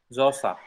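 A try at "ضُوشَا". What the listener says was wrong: Kalau ini bukan sa, sya. Dosha. Bukan so. Ada titiknya. Doro. Bukan sa.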